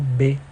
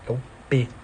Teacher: consoante oral oclusiva bilabial sonora